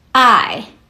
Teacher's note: I uses the fourth tone. The fourth tone starts high and drops sharply. Think of it like giving a firm command.